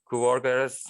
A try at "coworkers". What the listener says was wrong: And then coworkers. Coworkers. Yeah, when you say them separately, there was a little bit of a mix-up on the cluster consonants there.